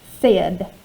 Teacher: if it followed the rule it would have that long a sound a right but it doesn't it says e